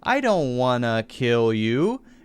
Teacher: He says don't wanna, I don't wanna, and wanna instead of want to.